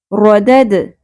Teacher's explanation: دال ساکن آ گیا، قلقلہ ہوگا